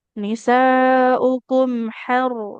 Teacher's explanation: ro-nya tebal karena fathah ro-nya sukun didahului fathah